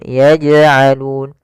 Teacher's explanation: Jim ada bacaan Qalqalah yaitu huruf jimnya memantul maka dipantulkan huruf jimnya